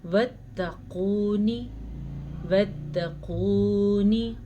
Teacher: قاف کو موٹا پڑھیے گا، قاف پر پڑھا جاتا ہے، موٹا پڑھا جاتا ہے، حروف مستعلیہ میں سے ہے